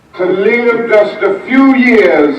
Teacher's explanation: you probably noticed that he drops a lot of his R's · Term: R-lessness